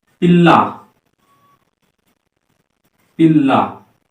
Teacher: ल और आधा ल और पूरा ल को मिला के जो ध्वनि निकल रही है इसी को बोलते हैं द्वित्व ध्वनि या युग्मक ध्वनि।